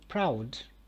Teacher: stressed one and also it is a long one again proud this is a long one because it has a diphthong and also it is an accented syllable